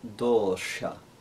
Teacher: this has that long O sound and the cerebral sha sound, dosha. And we've got to be careful to, as we make that D, take the tip of the tongue to the tip of the top teeth, dosha.